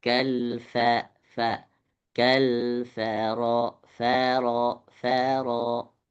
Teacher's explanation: Fa-nya jangan sampai jadi tebal.